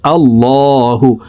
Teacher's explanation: আল্লাহু, এই লামকে ল বলে পড়তে হবে, কারণ আল্লাহ শব্দের আগের হারফে জবর অথবা পেশ হইলে এই লামকে ল অর্থাৎ মোটা করিয়া পড়িতে হয়। তো দেখুন এখানে আল্লাহ শব্দের আগের হারফে জবর আছে, এই কারণে এই লামকে ল বলে পড়ব।